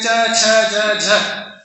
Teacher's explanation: those varnas where the tongue is touching the roof of the mouth, that area is called talu